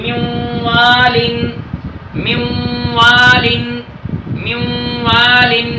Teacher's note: نون ساکن کے بعد واو آیا ہے، ادھر ادغام مع الغنہ کر کے پڑھیں گے